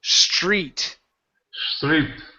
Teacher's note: switch that TR to a CHR